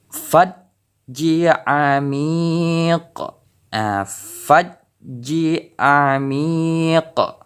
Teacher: Jadi pantulan huruf qa ini lebih besar.